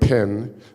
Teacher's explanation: say pin and you will feel an explosion of air